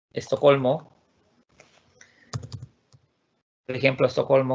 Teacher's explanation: los de habla hispana, tenemos la mala costumbre de a todo lo que empieza con S le ponemos la E delante.